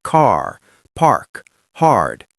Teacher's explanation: We are heavily rodic, meaning we pronounce every single written R with an aggressive hard sound like car, park, hard. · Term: heavily rhotic